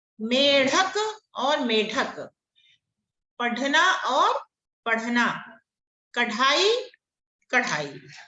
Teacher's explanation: ढ और ढ दोनों मूर्धन्य ध्वनियां हैं